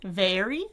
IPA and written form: veri (very)